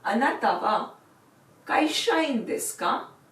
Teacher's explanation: If you have to make this into a question, add the particle ka at the end, and while reading it, you will do it with rising intonation.